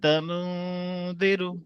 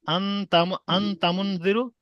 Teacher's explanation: এবার যদি আমি শুধু এখানে যদি এরকম পড়ি, আন তামুনদিরু, তাহলে এই হরিফে ইখফার মতো হয়ে যাচ্ছে, আওয়াজটা জাহির হয়ে যাচ্ছে, জাহির হবে না, সাউন্ডটা পুরো নাকের ভিতরে হোল্ড করে নিতে হবে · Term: গুণনা